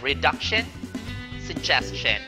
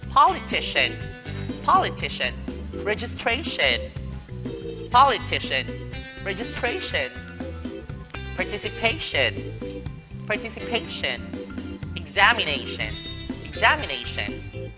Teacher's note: the stress is on the second to last syllable for the following words